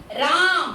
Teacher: बुलाने में अ का मतलब खिंचाव हो रहा है, लंबा समय ले रहा है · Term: प्लुत स्वर